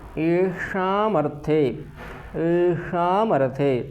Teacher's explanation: मूर्धन्य षकार है तो मूर्धन्य षकार का ही उच्चारण अच्छा रहेगा